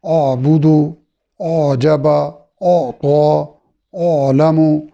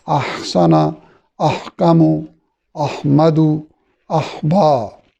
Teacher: اعبدو آواز میں اونچا پن اور سختی اور نرمی کی درمیانی کیفیت ہے، جبکہ احسنا آواز میں اونچا پن اور نرمی ہے. باقی وہ بھی باریک ادا ہوتا ہے، یہ بھی باریک ادا ہوتا ہے.